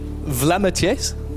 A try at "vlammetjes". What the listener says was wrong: More on the A.